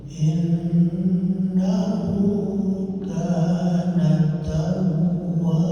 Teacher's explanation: Nunnya dikasih guna dulu, jangan buru-buru, gak boleh miring.